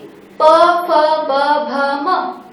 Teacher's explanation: प वर्ग का उच्चारण होठों पर ज्यादा बल लगा के किया देता है · जैसे कि प, फ, ब, भ, म, मैं उच्चारण कर रही हूँ तो मेरे दोनों होठ जुड़ रहे हैं